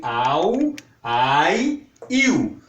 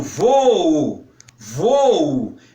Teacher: Aqui são considerados hiatos, porque as duas são pronunciadas de forma independente.